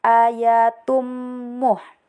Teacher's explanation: ada mim tasjid dibaca dengung 3 harkat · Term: hukum gunnah